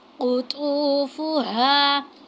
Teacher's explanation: क़ाफ़ को मोटा पढ़ना है, क़ा को मोटा पढ़ना है और हा को मोटा पढ़ना है